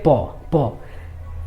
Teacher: प दोनों ओठ जो है एक दूसरे से सट रहा है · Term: ओष्ठ्य वर्ण